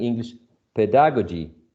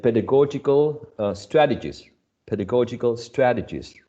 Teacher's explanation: additional syllable here i mean there's one final syllable okay so pedagogy stressed on the first syllable pedagogical in the third syllable